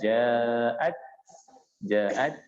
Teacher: Karena huruf ta. Ta itu kalau dia berbaris sukun ada sifatnya hamas ya, mengeluarkan desis atau nafas. Makanya dia agak sedikit dibaca ja'at.